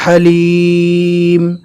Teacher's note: ہا کو ادا کرتے وقت اچھے سے حلق سے آواز نکالنا ہے